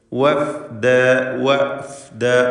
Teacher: വാവ് 2 ചുണ്ടുകളിൽ നിന്നായി ഉച്ചരിക്കേണ്ട അക്ഷരം എന്നാൽ ഫ താഴെ ചുണ്ടും മേലെ പല്ലും ചേർത്ത് ഉച്ചരിക്കേണ്ട അക്ഷരം രണ്ടും വ്യക്തമായി അതാത് മഖ്റജിൽ നിന്ന് തന്നെ വരണം വഫ്ദ വനസൂഖുൽ മുജ്രിമീൻ വനസൂഖു